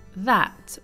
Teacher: The first one is that with an open a sound